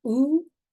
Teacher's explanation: So the airway or the pharyngeal airway is the most open. If we say U, then the tongue is going back and up, or like to the top of the mouth and then going all the way to the back.